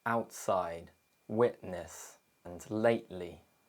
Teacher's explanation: However, there is a third option. The glottal T and the true T may happen at the same time. This is known as glottal reinforcement. We stop the air in our throat and our mouth simultaneously.